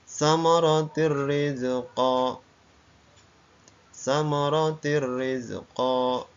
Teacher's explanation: kasrat Tain bertemu dengan huruf ro suara tanwinnya hilang masuk dalam huruf ro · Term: idgham bila gunah